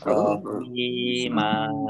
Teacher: Fathah tanwin alif karena waqaf maka dibaca fathah dan panjang 2 harokat. Panjangnya hanya 2 harokat ya, jangan panjang banget.